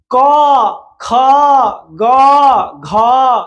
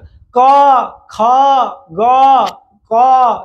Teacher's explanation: গলা থেকে চলে আসছে গলা বা আমাদের জিহ্বার যে গোড়া গলা থেকেই তো জিহ্বার গোড়াটা ধরছে তাই না ক খ গ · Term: কণ্ঠ বর্ণ